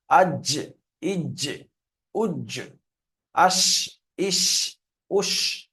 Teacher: জিম শিন ইয়া উচ্চারণ হয় জিবের মাঝখান তার উপরের তালুতে লেগে উচ্চারণ হয়। জিবের মাঝখান এবং তার বরাবর উপরের তালুর সাথে লাগিয়ে উচ্চারিত হয় জিম শিন ইয়া। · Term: জিম শিন ইয়ার মাখরাজ